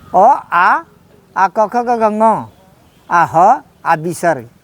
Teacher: अकु विसर्जनीय नाम कंठ, आ क ख ग घ ङ, आ ह आ विसर्ग, इनका उच्चारण कंठ से होता है। सबका व्याकरण है।